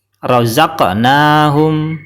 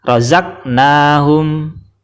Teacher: qalqalahnya berupa huruf qaf disukun dan cara bacanya dipantulkan